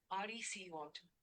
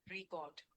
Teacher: Depending on whether it is used as a noun or verb. As a noun, the stress is on the first syllable, record. As a verb, the stress shifts to the second syllable